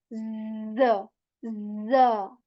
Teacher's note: z sound is there which has this buzzing sound this vibration